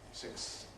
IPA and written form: sɪksθs (sixths)